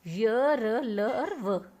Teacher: अंतस्थ व्यंजन इन वर्णों का उच्चारण करते समय जीभ मुख के किसी भी भाग को पूरी तरह स्पर्श नहीं करती